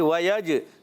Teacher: وَيَجْعَلْ لَكُمْ، واو کی ادائیگی ہونٹوں کی گولائی سے. وَيَجْ، کلکلا کریں گے، جیم میں آواز لوٹ کر آئے گی